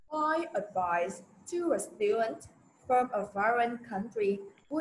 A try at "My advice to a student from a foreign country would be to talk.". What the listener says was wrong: mày đọc nhanh quá đó, đọc nhanh quá. Không có my advice mà rõ ràng đó là ngữ điệu sẽ là my advice. My advice to a student, nhớ sắc sắc đó.